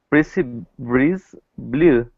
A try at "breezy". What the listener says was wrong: So it sounds to me like you're saying freezy and breeze. We want to make sure it's a. We want to make sure it's a Z sound, not a S sound. So freezy breeze.